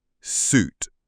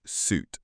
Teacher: We pronounce suit with the long ooh as in boot.